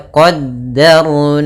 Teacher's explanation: ro sukun di dalam huruf fathah, maka ro-nya tebal